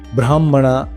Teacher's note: ಯಾವಾಗ ಹಕಾರ ಅನುನಾಸಿಕ ಅಥವಾ ಅಂತಸ್ತ ಪದಗಳ ಜೊತೆ ಕಂಬೈನ್ ಆದಾಗ ಅದನ್ನ ಹೃದಯದಿಂದ ಹೇಳಬೇಕು ಯಾಕೆ ಅಂದ್ರೆ ಹಕಾರ ಅರ್ಧಸ್ವರ ಮಾತ್ರ ಇರುತ್ತೆ ಆ ಅರ್ಧಸ್ವರ ಅನುನಾಸಿಕ ಅಥವಾ ಅಂತಸ್ತದ